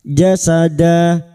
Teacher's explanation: Fathah tanwin yang dibaca wakaf selain tak marbutah. Karena kita memilih wakaf di sini maka 2 harakat kita panjangkan.